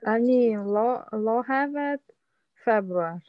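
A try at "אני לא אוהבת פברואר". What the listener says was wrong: видите, все прекрасно получается.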